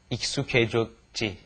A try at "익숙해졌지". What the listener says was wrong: But be sure to say K instead of he.